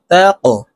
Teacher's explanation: কফ কলকলার হরফ উপরের দিকে ধাবিত করে ধাক্কা দিয়ে উচ্চারণ করব